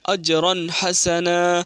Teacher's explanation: رن تنوین میں اظہار ہوا ہے کیونکہ تنوین کے بعد ہا آیا، اس لیے تنوین کو ظاہر کر کے بلا گنہ کے ساتھ جلدی پڑھیں گے